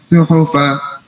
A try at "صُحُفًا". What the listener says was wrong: صحفا, تھوڑا سا لمبا ہوگا.